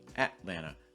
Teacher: Well, we've talked about it in a previous video before, but this is a held T sound or a stop T sound. You're basically tightening your throat a little bit and then not releasing your breath until you get to that land. So instead of saying Atlan, you're doing Atlanta and then releasing it down that land.